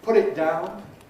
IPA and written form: ˈpʊt̬ ɪt ˈdaʊn (put it down)